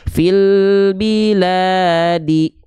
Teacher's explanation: Dua harakat itu biar konsisten dua harakatnya enggak kepanjangan dan enggak kependekan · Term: Mad Thobi'i